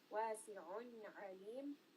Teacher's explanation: Both of these ayn are from the throat. Also this is going to be idhar.